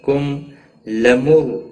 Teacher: را ساکن سے پہلے پیش ہے اس لیے را ساکن موٹا پڑا جائے گا